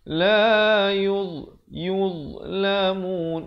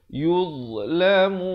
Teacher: makhrajnya sama macam huruf zal, ujung lidah dikeluar, tapi dia tebal lah